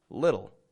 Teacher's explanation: little with a flap t and a dark L